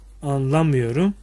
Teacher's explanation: A düz ünlüyken dar ünlüye dönüşmüş. Buradan da ünlü daralması var diyebiliriz.